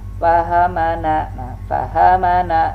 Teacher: Fahamana, tidak ada yang panjang. Jangan sampai dipanjangkan.